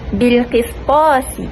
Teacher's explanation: Sin perlu dibaca nipis, yang mana sebelumnya ada huruf ta yang perlu dibaca tebal.